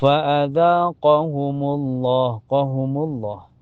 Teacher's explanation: Ini di lafaz Allah dibaca tebal ya tafhim karena sebelumnya berharakat domah.